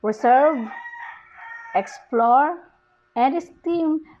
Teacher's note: the words reserve, explore, and esteem receive the primary stress on the second syllables